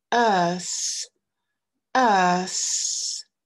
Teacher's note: Notre voyelle et le son S. Vous allez bien mettre la langue entre les dents et vous assurer qu'au niveau de la gorge, ça ne vibre pas.